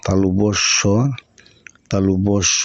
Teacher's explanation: এই তালুবস্টা তালু থেকে উচ্চারণ হয় তাই এর নাম তালব্য স